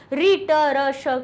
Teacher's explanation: ऋ ट र ष का उच्चारण स्थान मूर्धा है